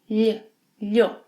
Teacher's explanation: The LH sequence must be pronounced as one sound. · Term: LH sound